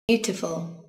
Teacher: từ này có 3 âm tiết và trọng âm rơi vào âm Tiết đầu tiên nhé